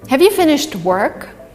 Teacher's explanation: so the emphasis is on work here and have is weak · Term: weak word